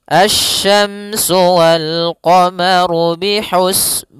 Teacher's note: Pada lafal asyamsu di sini ada alif lam syamsiyah yaitu alif lam yang ditulis tapi tidak dibaca sehingga bacaannya langsung ke huruf syin